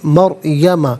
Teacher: را ساکن ما قبل میم پر زبر، را ساکن کو پر کر کے پڑھیں گے